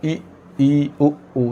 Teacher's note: समृत स्वर में जब हम उच्चारण करेंगे स्वर का, तो हमारा मुंह है वो बिल्कुल नहीं खुलेगा और मुंह बंद रहेगा। तो जिन स्वरों के उच्चारण में मुंह बंद रहता है, ऐसे स्वर हम कौन से स्वर कहलाते हैं, समृत स्वर कहलाते हैं।